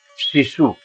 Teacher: शिशु बोलिए कि उसमें सीटी जैसी आवाज निकले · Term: तालव्य शा